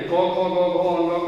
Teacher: क से अंग तक का उच्चारण जो होगा वो कंठ होगा